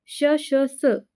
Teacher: या वर्णांचा उच्चार करताना उच्चारात घर्षणामुळे उष्णता निर्माण होते आणि उष्णतेमुळे काय होतं तर गरम हवा बाहेर फेकली जाते किंवा घर्षण होते म्हणून त्यांना काय म्हटलं जातं उष्म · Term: उष्म वर्ण